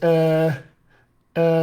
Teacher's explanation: going to take this jaw and protrude it a tiny bit i'm going to take my tongue and spread it even wider than it is in my own accent and i'm going to lift up the back of my dorsum fairly high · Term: hesitation sound